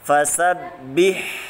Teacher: Mengalirkan nafas. Keluar dari tengah tenggorokan. Suaranya lembut, halus.